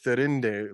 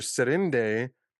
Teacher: So basically there's a schism that happens in Valinor because of a language shift, and Feanor makes it political because his mother's name before the shift was Therinde, like with a thorn, the th sound, and then the language shifts from a th sound to an s